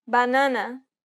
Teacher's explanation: it's the closed variant of the a sound